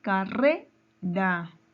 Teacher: La palabra carrera. Su sílaba tónica está en re, ¿verdad? Entonces es una palabra grave.